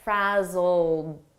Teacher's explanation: it's a past simple Ed verb but the pronunciation is a very soft D and you almost don't hear it